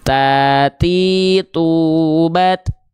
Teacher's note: ujung lidah kita sentuhkan ke pangkal gigi seri atas kita.